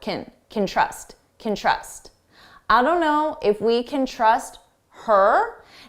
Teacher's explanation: I don't know if we can, if we can trust, if we can trust and notice you hear trust more because it's the main verb and can, which sounds like kin, is very short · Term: very unstressed sound